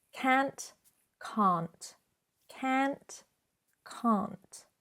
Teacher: Just make sure you do add that T sound at the end.